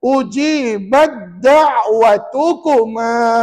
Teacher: Ta dengan dal. Jadi ta ni masuk dalam huruf dal, maka huruf ta je jangan baca. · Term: idgham mutajanisain